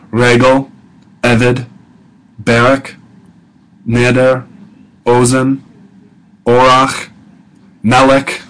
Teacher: these two syllable words with a stress on the first syllable